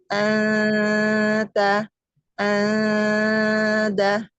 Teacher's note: huruf ta, da itu kan di depan, jadi dia tipis banget, cuma di depan mulut aja.